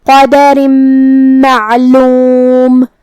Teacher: کلمت قدر میں یہاں قاف پہ اور دال پہ زبر ہے، تو یہ سب حرکات کا دھیان رہے. آخری میں را کے نیچے تنوین زیر ہے. پھر حرف المیم ہے کلمت معلوم میں، تو یہاں حکم ہوا ادغام بغنہ